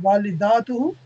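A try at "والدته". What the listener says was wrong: Waw alif lam dal ta ha. Dal is short.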